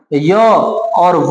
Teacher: य और व को अर्ध स्वर या संघर्षहीन व्यंजन कहते हैं। ये स्वर नहीं है, अर्ध स्वर है, याद रखिएगा, य और व अर्ध स्वर है।